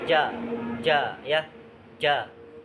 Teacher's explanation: Oke, tengah lidah ya. Huruf jim tuh rupanya di tengah lidah, dia mengangkat ke atas menempel